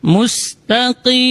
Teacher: huruf qaf dibaca dari aksal lisan, di pangkal lidah.